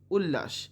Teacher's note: ল এর প্রভাবে ত হয়েছে ল